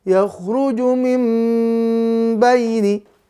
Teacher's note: bunyi nunnya diganti jadi bunyi mim sukun disertai dengung 2 harokat. Ya, 2 sampai 3 harokat ya, sebelum masuk ke huruf ba. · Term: huruf iklab